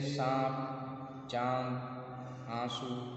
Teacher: एक अनुनासिक स्वर, दूसरे निरनुनासिक स्वर। अनुनासिक स्वरों में उच्चारण नाक व मुंह दोनों से होते हैं तथा उच्चारण में लघुता रहती है।